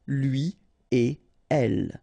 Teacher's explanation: So after this conjonction et, like we've got here, you don't make any liaison. So no links after et. Okay, so if you want to read it correctly here, it will go like lui et elle.